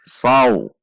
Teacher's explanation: Fathah bertemu wawu sukun bacaan lain, dibaca mengayun